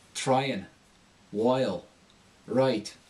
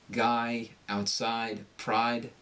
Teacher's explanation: the American's going to have a sharp, clear I sound